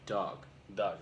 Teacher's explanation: It's nice and short because it's cut off by a consonant of the G.